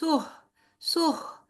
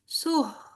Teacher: हा की सांस हमारी बाहर की तरफ निकलेगी